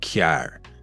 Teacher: You'll hear something like kyar. That final R is actually emphasized and it's not dropped